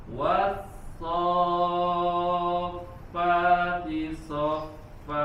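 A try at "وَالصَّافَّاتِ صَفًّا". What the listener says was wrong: Sudah panjang tapi belum ditekan. Soffa, ada tasydid.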